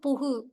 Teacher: ஒரு தனிக்குறில் எழுத்தை அடுத்து வரும் வல்லின உகரங்கள் ஒரு மாத்திரை அளவு முழுமையாக ஒலிக்கும்ன்றாங்க. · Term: முற்றியலுகரம்